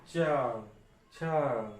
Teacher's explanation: तालु, तालु जो बीच में होता है वो टच होगा।